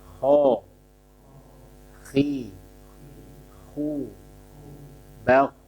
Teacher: Jadi kho tebal, semua kondisi fathah, kasroh, dhammah. Akan tetapi saat kasroh berkurang ketebalannya ya, tafkhimnya. Tebal kan tafkhim ya istilahnya ya, tafkhim nisbi, jadi ketebalannya berkurang.